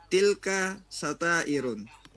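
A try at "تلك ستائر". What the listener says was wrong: satair bidun tanwin. Unzur. Bidun tanwin. Tilka satair. Satair.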